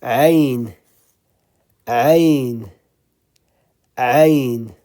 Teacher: It's in the middle of the throat.